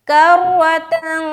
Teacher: नाक से आवाज आएगी इख्फा करते हुए